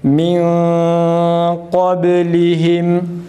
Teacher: Kalın olduğuna göre demek ki burada kaf harfine tabi olan bir mukadder elif var. Ona göre a sesi çıkararak, yalnız uzatmadan, a sesi çıkararak okuyoruz, yalnız uzatmadan.